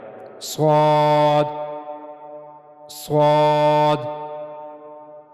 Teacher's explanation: स्वाद और सीन में फर्क यह है कि सीन उसको अदा करते हुए एक तो वो बारीक अदा किया जाएगा और दूसरा सीटी की आवाज आएगी। जबकि स्वाद को पुर अदा किया जाएगा। स्वाद स्वाद तो जबान की नोक ऊपर के अगले दो दांतों के अंदरूनी हिस्से के पास जाएगी।